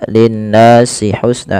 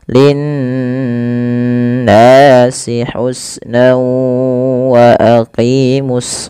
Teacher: nun berharakat tasydid itu wajib ditahan suara n ya. Nah, ini yang kita namakan dengan gunah. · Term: gunnah